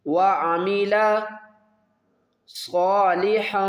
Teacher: صاد کو پر پڑھیں گے اور نون کی آواز کو چھپا کر پڑھیں گے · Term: اخفا